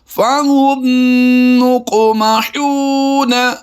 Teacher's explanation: यानी यहाँ पर यह भी इशारा दिया गया है कि काफ को हमने पुर भी पढ़ना है और कलकला करके भी पढ़ना है।